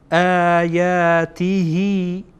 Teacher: اینجا هی خوانده میشه، ای خوانده نمیشه. اگر این نمی بود میخواندین آیاته، بلکه حالا میخوانین آیاته هی للناس.